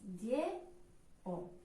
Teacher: Lleó, les vocals juntes estan així i ens fixem que la segona vocal no és ni la I ni la U, per tant, hiat, van en síl·labes diferents